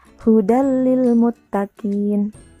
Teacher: jika nun mati atau tanwin bertemu dengan huruf lam dan rok cara membacanya yaitu dileburkan tanpa disertai dengung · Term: Idgham bilagunnah, idgham bila gunnah